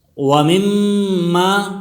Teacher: میم مشدد ہے، میم مشدد میں غنہ ہوگا، آواز ناک میں چلی جائے گی۔